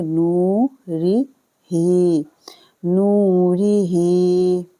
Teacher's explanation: را کو پڑھیں گے باریک ری، نو کو کھینچنا ہے، واو ساکن کے ساتھ ملا کے